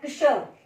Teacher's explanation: इसमें क और श की आवाज को मिलाया गया है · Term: संयुक्त अक्षर